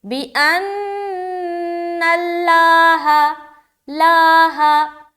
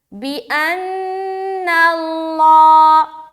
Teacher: ہمیں کیا پڑھنا ہے، بِأَنَّ اللہ، ہا کو باریک رکھیں گے لیکن لفظ اللہ کا لام موٹا ہوگا، تو سمجھ آ رہی، لاہ یہ باریک ہے، لاہ یہ موٹا ہے، تو سیکنڈ والا ادا کرنا ہے۔